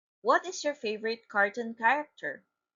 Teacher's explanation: It is a falling intonation because it is an example of a question not answerable by yes or no.